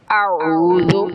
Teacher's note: حمزہ وہ اقصی حلق سے ادا ہوتا ہے اور عین وہ وسط حلق سے ادا ہوتا ہے۔ اب جب ان کو ادا کرے گا انسان تو اپنے مخرج سے حمزہ کو اقصی حلق سے ادا کرنا ہوگا اور عین کو وسط حلق سے۔